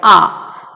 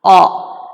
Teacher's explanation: What happens is, for this A, the back part of the tongue is raised just above the open position